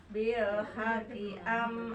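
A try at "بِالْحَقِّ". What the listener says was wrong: Tapi ditahan Bu, ada tasjid. Bil haqqi.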